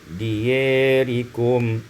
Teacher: dibaca imalah fathah ya dan alif menjadi diyarikum